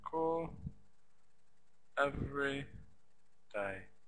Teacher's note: Every is 2 syllables, but we would stress the first.